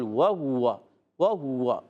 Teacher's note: وہ ہوا میں واو کی ادائیگی ہاتھ پر پیش ہے، پھر واو ہے، ہونٹ گول، وہ ہوا، وہ ہوا، مسلسل گول رہیں گے ہونٹ۔